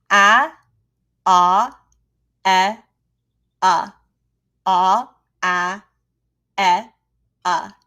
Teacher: It's back in the mouth. It's kind of down and back a little bit.